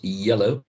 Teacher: Se levanta la parte de atrás de la lengua hacia la zona, ¿cierto? De la zona velar o el paladar blando, que le llamamos nosotros en inglés velum o soft palate. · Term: glide or semi-vowel